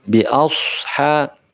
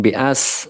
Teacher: sodnya jangan lupa diucapkan dengan bibir yang manyun, mencucu